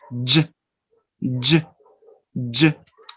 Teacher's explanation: And notice two movements. First the alveolar and then the post-alveolar or palatal sound.